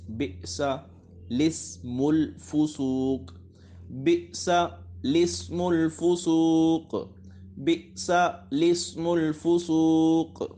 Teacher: اس کلمے میں لام سے پہلے اور لام کے بعد دونوں الف نہ پڑھیں بلکہ لام کو زیر دے کر پڑھیں